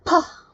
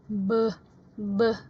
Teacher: Kalau bah itu nanti kalau kalian masih ingat ya, vocal cords di sini atau pita suara kalian itu bergetar, beh begitu ya. Sedangkan pah itu tidak bergetar, walaupun ada semacam bergerakan di sini gitu ya, tetapi yang bergetar pita suaranya adalah ketika kita menyuarakan bunyi beh gitu ya.